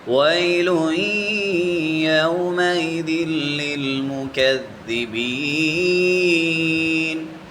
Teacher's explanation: لام کے اوپر تنوین ہے اور آگے یا حروف یرملون میں سے ہے یا، تو یا کے اوپر شد بھی ہے، اس پر غنہ ہوگا